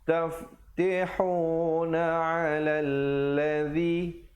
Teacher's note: ladzi di hujung lidah